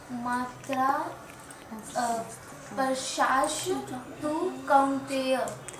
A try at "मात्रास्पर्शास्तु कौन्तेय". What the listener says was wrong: स्पर्शाश है, स्पर्श तुम अलग कर दो, स्पर्श आस्तु।